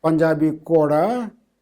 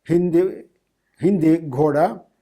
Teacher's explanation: Initial voice aspirated stops of earlier Indo-Aryan appear in Punjabi as voiceless stops with low tone on the following vowel